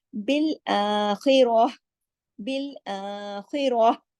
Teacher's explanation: ये जो ताय मरबूता है ये हा में बदल जाती है